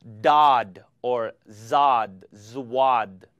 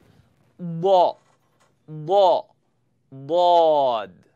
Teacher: I used the sides of my tongue to touch the big teeth in the back, the molars. So my tongue's going to press up to the side.